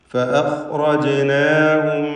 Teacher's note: റാഇനും പൂർണ്ണമായ തഫ്ഖീം. ജീമിൻ്റെ സുക്കൂൻ ഖൽഖല സുഗ്റ നൽകി ശബ്ദം ചലിപ്പിക്കുക.